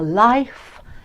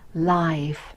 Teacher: So make sure that your life, it sounds quite different to live and leaf and leave. So different sounds there, the unvoiced f and the voiced v.